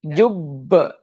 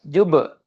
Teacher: Jadi pada wakaf di Jubb itu qalqalah kubra. Beda dengan qalqalah sugra. Jadi pantulannya berbeda.